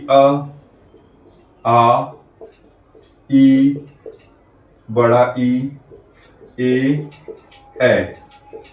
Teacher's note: आइए कुछ को लिखते हैं यहां पे, जैसे कि अ, आ, ई, बड़ा ई, ए। तो जब हम इनका उच्चारण करेंगे तो जो हमारे होंठ हैं वो गोल नहीं होते हैं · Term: अवृत्तमुखी स्वर